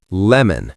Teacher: For a light L, lemon, your tongue is pointy. It touches the ridge behind your top teeth.